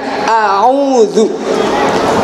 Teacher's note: cara melafalkan huruf hamzah itu melalui ujung bagian dalam daripada leher kita dengan tanpa penekanan